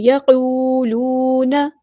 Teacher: رکیں گے، یقولون، قاف پورا ادا کرنا ہے، ہیوی لیٹر ہے، واو مد آ گیا تو مد اصلی کریں گے، اور دونوں جگہوں پہ برابر لمبا کرنا ہے · کریں گے، اور دونوں جگہوں پہ برابر لمبا کرنا ہے، یقولون، نون کی زبر کو لمبا نہیں کریں گے